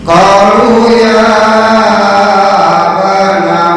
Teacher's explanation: Qalu ya Qalu, ko satu alif, lu satu alif. Qalu ya, ya baru panjang 4 sampai 5 harokat